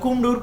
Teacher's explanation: কুমড়োর ক হচ্ছে কন্ঠে উচ্চারিত